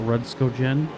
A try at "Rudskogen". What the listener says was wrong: No. It's a G, not a J. How do you say gorilla? How do you say gorilla?